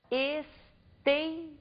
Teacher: nós pronunciamos com maior intensidade a penúltima sílaba da palavra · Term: paroxítona